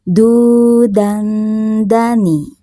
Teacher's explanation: Nah ini ada tanwin fathah menghadapi huruf dal, maka tanwin fathahnya ini dibaca samar, ditahan sebentar sambil didengungkan, sambil siap-siap mau melafalkan huruf dal. · non sukun di tanwin fathah ini makhrajnya berdekatan dengan huruf dal, maka saat didengungkannya itu nampak sekali non sukunnya